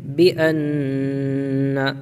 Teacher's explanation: نون کے اندر غنہ ہوگا کیونکہ نون کے اوپر تشدید ہے